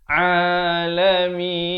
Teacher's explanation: jelaskan huruf ain makhrajnya di tengah kerongkong ini